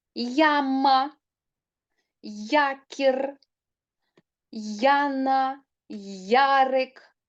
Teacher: от Ви чуєте що літера Я стоїть на початку тому ми чітко чуємо звуки й а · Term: два звуки й А